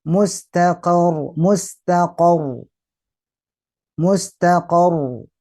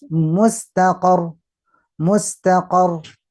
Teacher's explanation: Tasdid mustaqar, sedikit ditahan.